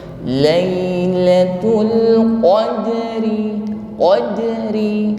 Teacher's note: Lailatul qadri, huruf ra berharokat kasra, ri dibaca ringan ya. Takrir bergetar namun tarkik karena harokatnya kasra. Tarkik ini diiringi bunyi tipis ya, tidak tebal.